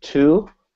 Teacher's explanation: you'll get a vibration on the u part, but not the t